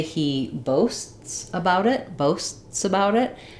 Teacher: You don't really hear that t, right? But you do hear two separate s's.